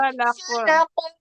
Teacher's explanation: فا لا جی باریک ہے، قاف موٹا ہے تو موٹا کرتے ہوئے رکیں گے